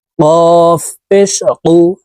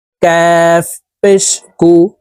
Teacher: গোড়া তার বরাবর উপরের তালুর সঙ্গে লাগাইয়া উচ্চারণ করতে হবে আর কাফ হরফের উচ্চারণ জিহ্বার গোড়া থেকে একটু আগে বাড়াইয়া তার বরাবর উপরের তালুর সঙ্গে লাগাইয়া উচ্চারণ করে পড়তে হবে